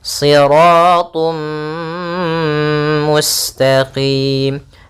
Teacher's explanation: kita masukkan tanwinnya ke huruf mim dan ditahan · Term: idgham bi gunnah